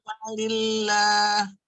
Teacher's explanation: Allah kalau dari li harus dibaca tipis. Malillah, nggak boleh malillah ya.